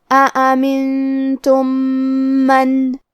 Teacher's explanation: آخری میں میم ساکن ہے، پھر حرف المیم ہے کلمت من، کیونکہ یہاں حکم ہے ادغام، اور ادغام کا معنی ہے حرف کو حرف میں داخل کرنا. تو ہم پہلے میم کو دوسرے میم میں ملا کے ایک ہی میم غنہ اور تشدید کے ساتھ پڑھیں گے